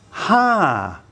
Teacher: And the word is ha, with a falling tone